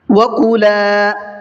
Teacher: الف مدہ کا قاعدہ ہے اس لیے لام کو کھینچ کر کے پڑھا ہے